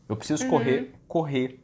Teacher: A gente come o último R.